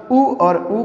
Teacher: या उ और ऊ कहाँ से उच्चारित होता है, तो ओष्ठ के माध्यम से उच्चारित होता है